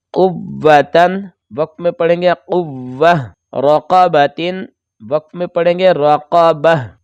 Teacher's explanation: جب ہم وقف کریں گے تو 2 نقطے بھی ختم ہو جائیں گے اور اوپر جو 2 زبر ہیں وہ بھی ختم ہو جائیں گے، تو ہا ساکن ہو جائے گا، تو یہ ہا سے بدل جائے گا۔